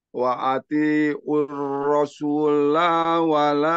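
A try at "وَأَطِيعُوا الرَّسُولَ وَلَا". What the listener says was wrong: Rasula. Rasula wala. La-nya pendek. Aur. Langsung. Tanpa ada mad ya, Afwan. Tidak aur, tapi aur. Langsung aur. Nah, makanya di sini cirinya adalah wawunya gak ada sukunnya. Jadi polos, enggak dibaca.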